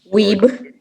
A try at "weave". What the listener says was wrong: Weave with a V.